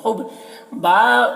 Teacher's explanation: با میں با ساکن حرف ہے تو پیچھے والے متحرک حرف ہا سے مل کر پڑھا جائے گا، با میں قلقلہ ہوگا